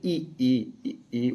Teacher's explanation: जीवा को मुंह में जितना संभव हो सके उतना ऊंचा और ताल के समीप रखा जाता है · संवृप्त स्वर या ऊंचा स्वर भी बोलते हैं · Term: संवृत स्वर